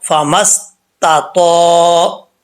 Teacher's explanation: اب پہلے تا کو باریک، دوسرے تو کو پر پڑھنا ہے ، فمستطاعوا، آگے عین ہے، عین کو کلیئر کر کے پڑھنا